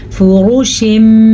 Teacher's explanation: غنّے کے ساتھ پڑھا جاتا ہے اور میم کے ساتھ پڑھا جاتا ہے، نہ کہ تنوین کے ساتھ یا نون ساکن کے ساتھ